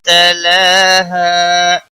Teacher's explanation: ہا الف مدہ ہے، 1 الف کے برابر کھینچ کر پڑھیں گے وقف کی صورت میں بھی۔